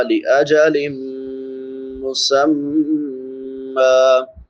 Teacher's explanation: نون تنوین کے بعد میم ہے، حروف یرملون میں سے تو ادغام مع الغنہ ہوگا، میم مشدد ہے، اس پہ غنہ ہوگا۔